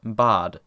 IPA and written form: baːd (bad)